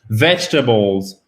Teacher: L'accent tonique se trouve sur la première partie.